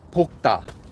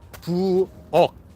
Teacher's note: They both get pronounced as if they were just the regular kiok sound, the standard consonant